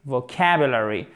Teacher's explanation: Accent tonique sur la seconde syllabe.